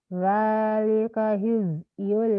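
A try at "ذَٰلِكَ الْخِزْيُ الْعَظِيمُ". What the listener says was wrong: Zalikal. Kalnya jangan buru-buru. Zalikal. Zalikal khizyul azim.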